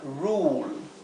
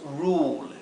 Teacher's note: tenemos un caso más especial que es más excepcional que se pronuncia como una u larga